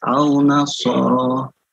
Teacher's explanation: Sodnya 2 harakat, ra-nya 2 harakat.